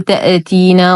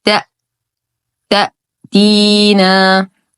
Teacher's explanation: الهمزه حرف شديد ينقطع الصوت فيه لا يوجد ارتداد او اهتزاز للصوت